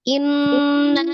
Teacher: ditahannya 2 sampai 3 harakat, kemudian suaranya dimasukkan ke al-khaisum atau rongga hidung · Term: gunnah